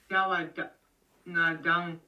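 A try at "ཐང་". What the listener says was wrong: Tang, c'est tang, tang. C'est un ta expiré bas. Tang, mais c'est un ta. Par exemple, on retrouvera cette même prononciation pour dire pur. Yang takpa ou tangwa. Tangwa, tangwa, ça veut dire pur.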